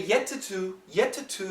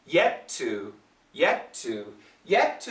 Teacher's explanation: actually a stop t two is a very clear t but when we have similar sounds next to each other we connect and we just keep the second sound so you do not have to say yet to to yet